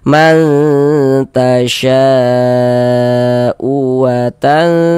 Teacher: suaranya itu kita tahan, kita panjangkan sebentar sepanjang dua harakat